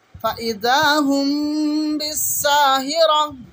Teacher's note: মিম সাকিনের ইকফার নিয়ম হলো মুখটাকে বন্ধ করে মিমের উচ্চারণকে ভালো করে পরিষ্কার করে কিছুক্ষণ ধরে রাখাকে মিম সাকিনের ইকফা সাফাবি বলা হয়